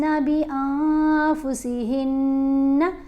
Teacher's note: مشدد نون ہو یا مشدد میم ہو تو اس کے اوپر ہم نے گنہ کرنا ہے۔ گنہ کرتے ہوئے آواز ناک میں پڑی جاتی ہے اور اس پر ہم نے ایک الف کے برابر ٹھہر کر اس کو ادا کرنا ہے، جلدی ادا نہیں ہوگا، ایک الف کے برابر ٹھہرا جائے گا۔